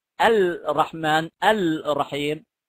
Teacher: لأن الراء الساكنة منقلبة عن لام تعريف للإدغام ، الرحمن الرحيم، ومدغمة بتصير الرحمن الرحيم في المتحركة، والإدغام زي